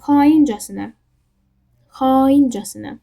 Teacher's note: Burada a uzanır, amma vurğu hara düşür? Xaincəsinə, i-yə düşür. İlk hecasında uzanır, ikincidə də vurğu qəbul edir.